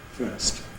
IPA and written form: fɝːst (first)